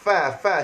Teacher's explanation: Makhraj huruf fa. Tempat parking fa adalah syafatan. Gigi atas sentuh bibir bawah.